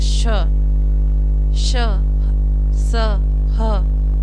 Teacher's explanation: ऊष्म व्यंजन का उच्चारण जो है एक घर्षण और रगड़ से होता है, मतलब एक जब हम मुंह से इनका उच्चारण करते हैं तो एक घर्षण पैदा होता है मुंह के अंदर, तो उसकी वजह से एक ऊष्म मतलब गर्म वायु निकलती है, उसकी वजह से ही हम इसको ऊष्म व्यंजन बोलते हैं।